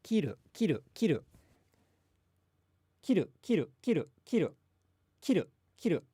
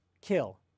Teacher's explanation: you don't exhale nearly as much in the Japanese K when it comes at the beginning of a word compared to the English K when it comes at the beginning of a word.